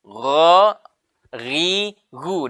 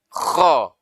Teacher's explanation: huruf ghain dengan huruf kho sama tempat keluarnya, sama-sama ujung tenggorokan.